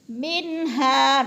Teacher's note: قلقلہ کی صورت میں، منہا، من پہ اظہار ہو رہا ہے، نون ساکن کے بعد ہا حروف حلقی میں سے ہے تو اظہار ہے، غنہ بالکل نہیں کریں گے